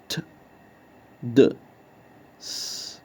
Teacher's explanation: by pressing the blade of the tongue against the alveolar ridge, producing sounds like t, d, s